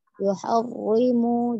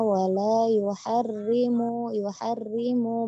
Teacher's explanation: roknya memang bertasydid ya, tetapi dia tarkik ya